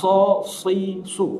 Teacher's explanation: huruf shad, ketika dia berharokat kasroh, maka selalu diucapkan di rahang tebal.